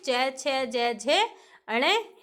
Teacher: तालु इसका उच्चारण स्थान है, और तालवे इसका नाम है। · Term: च वर्ग